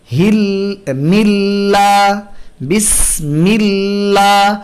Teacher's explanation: আল্লাহ শব্দের আগে যেহেতু জের আছে, আমরা আল্লাহ শব্দকে পাতলা করছি